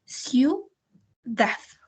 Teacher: la I y la U se escuchan juntas, no hay una entonación por separado.